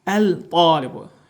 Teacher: ta hərfində dil demək olar ki, üst damağa yaxınlaşdırılaraq, sıxılaraq tələffüz olunur.